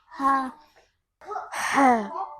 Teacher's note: it should be in the middle part of the throat, and it is a halqiya letter, a throat letter.